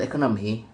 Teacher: In the base word economy, the stress falls on the second syllable.